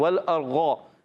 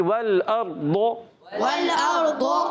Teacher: حمزہ را زبر اب، را ساکن سے پہلے زبر آگے، را پر ہو جائے گا. اور ضاد حروف مستعلیہ میں سے بھی ہے، حروف مطبقہ ایکسٹرا موٹے حروف میں سے بھی ہے، تو اس کو زیادہ پر رکھنا بھی ہے